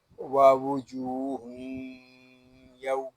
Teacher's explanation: آگے واو زبر وا واو پیشو واو جیم واو پیش جو واو جو ہا یا دو پیش ہن، ووجوہ یا واو زبر یو، ووجوہ یو. یہاں واو کو ہم کھینچ کر پڑھیں گے ایک الف تک